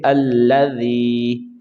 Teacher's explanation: اچھا جی، اگر ہم نے وقف کر دیا تو پھر ہم یہ نون کتنی نہیں پڑھیں گے، یہاں پہ عارضی حرکت کے ساتھ ہم اس کو ادا کریں گے تو پڑھیں گے الذی، یہ یائے مدہ ہے، اس کو ایک الف کے برابر کھینچیں گے